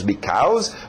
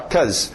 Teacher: em pronúncia rápida nós vamos ver o be sumir. E as pessoas geralmente falam só cause isso, cause aquilo, cause.